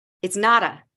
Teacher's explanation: Instead of it's not a, I push it together.